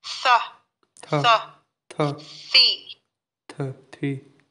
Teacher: Earlier on, I was hearing a voiced TH. It's supposed to be a non-voiced TH.